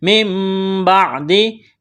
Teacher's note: نون ساکن کے بعد با ہے، یہاں پر اقلاب کا قاعدہ جاری ہوگا، اقلاب کریں گے، آواز ناک میں چھپائیں گے۔